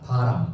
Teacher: 바람에 있는 비읍은요 무성음입니다. 바람, 성대가 진동하지 않아요. 근데 갈비라고 할 때 이 비는요 약간 영어의 V 사운드에 가깝습니다.